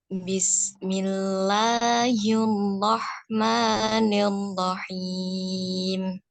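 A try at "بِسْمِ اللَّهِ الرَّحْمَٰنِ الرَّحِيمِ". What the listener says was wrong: Tikrornya ro kurang. Getaran ro-nya kurang. Tapi jangan berlebihan ya. Bismillahirrahmanirrahim. Nah, ada getaran 2 ketukan, 1 ketukan. Bismillahirrahmanirrahim.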